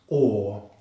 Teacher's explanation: We make this sound at the back of the throat with the tongue pulled back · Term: long vowel sound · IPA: /ɔː/